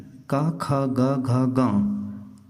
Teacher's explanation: कवर्ग, मुंह में कंठ के पास जीभ टकराती है।